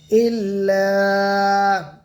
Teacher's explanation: همزة لام زير إل، لام ألف زبر لا، ইল্লা, আলিফ খালি, আলিফের আগে জবর, আলিফ মাদ্দা, আলিফ মাদ্দাকে এক আলিফ টান দিয়ে পড়বো